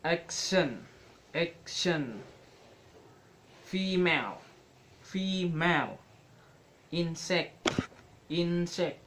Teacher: have primary stress on the first syllable